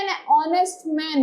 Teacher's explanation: It's an honor because H is silent in these words